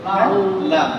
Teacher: জিহ্বার আগার কিনারা, সামনের উপরে দাঁতের মাড়ির সঙ্গে লাগাইয়া